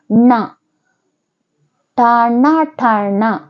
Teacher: ನಾಲಿಗೆ ಹೋಗಿ ಮೇಲಿನ ಮೂರ್ಧನ್ಯಕ್ಕೆ ಹೊಡೆಯುವಂತದ್ದು ಅಥವಾ ಮೇಲಿನ ಭಾಗಕ್ಕೆ ನಾಲಿಗೆಯ ಮೇಲಿನ ಭಾಗವನ್ನು ಹೊಡಿಬೇಕು ಣ ಟಣ ಠ ಣ